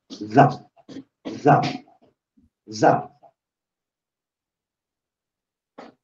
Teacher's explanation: ang sound niya ay para siyang dobleng Z so mayroong hanging lumalabas sa gilid ng bibig mo